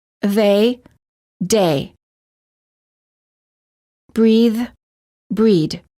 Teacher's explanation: some non-native speakers incorrectly pronounce the voiced th as a d